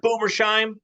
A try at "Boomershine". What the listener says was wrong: Maybe if you pronounce his last name correctly, it would help. Boomershine with an N, not an M.